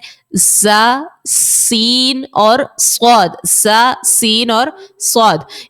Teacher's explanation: زا سین اور صاد ان 3 حرف میں آپ سیٹی نکالیں گی